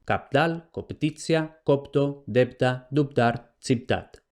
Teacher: en posición implosiva habría una neutralización a un archifonema bilabial sonoro en el que se ha neutralizado, se ha perdido, no importa, la oposición entre si es oclusiva o fricativa.